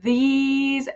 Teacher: putting your tongue through your teeth, these, and pulling back is how you get that vibrating TH sound